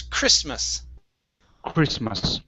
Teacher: the t is silent here